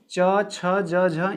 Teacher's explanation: इसे हम तालु, तालव्य या स्पर्श संघर्षी भी बोलते हैं